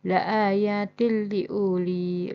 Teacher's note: harus membaca harokat tanwin pada huruf ta pada lafal la ayatil liuli lebur ke huruf lam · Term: idgham bila guna